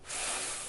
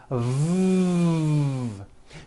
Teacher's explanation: the F sound is unvoiced and the V sound is voiced they are both produced by contacting your upper teeth to your